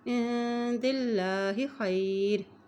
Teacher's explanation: अल्लाह के नाम से पहले ज़ेर आ गई है इसलिए अल्लाह का नाम बारिकत पढ़ेंगे, बारिकत अता किया जाएगा।